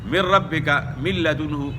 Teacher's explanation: لام، را میں بلا غنہ ہے، یعنی بغیر غنے کے آپ نے ادغام کرنا ہے